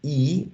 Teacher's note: Entonces, cuando yo pronuncio I, mi lengua va arriba, donde dice high, ¿cierto? Arriba, high, y va al frente, hacia los dientes. Por eso se habla de que esta vocal I es high and front, porque la lengua va arriba y va al frente, hacia los dientes superiores, por decirlo así.